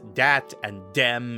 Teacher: his usual French accent is dialed up to the point that he can't even pronounce a th sound anymore instead replacing it with DS